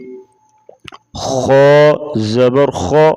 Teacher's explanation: خا کو موٹا پڑھیں گے، موٹے حروف سے ہے